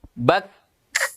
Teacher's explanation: Ya, tahan dulu suara. Bak. Lalu lepas.